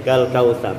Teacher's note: maka ro dibaca tebal, ya, ditafkhimkan.